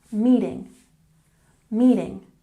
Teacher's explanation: meeting has emphasis on the first syllable